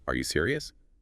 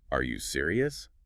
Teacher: add that little upward flick at the end